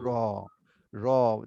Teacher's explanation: জিহ্বার আগার পিঠ যদি তার বরাবর উপরে তালুতে ঘুরিয়ে নিই তাহলে র